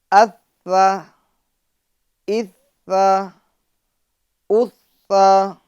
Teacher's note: اس کو ہمیں نرمی کے ساتھ ادا کرنا ہے، شدت کے ساتھ سختی کے ساتھ نہیں ادا کرنا